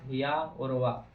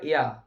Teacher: संघर्षहीन अर्धस्वर अर्थात या और वा, मतलब संघर्षहीन या अर्धस्वर उन्हें कहते हैं 2 स्वर जिन्हें बोलने के लिए जब हम, इनका नाम है या, हमारी जीभ कहीं टकराती नहीं, कहीं भी नहीं टकराएगी जीभ आसपास, मतलब कहीं कोई समस्या ही नहीं होगी, आधे स्वर आराम से निकल जाते।